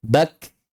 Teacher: huruf kaf dan ta ketika terlepas tidak menghasilkan bunyi baru, melainkan hanya mengembuskan napas saja. Udah. Tidak menjadi sin, tidak menjadi ha. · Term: hams